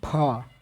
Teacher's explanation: फ हवा निकल रहा है ना? यानी कि महाप्राण व्यंजन है।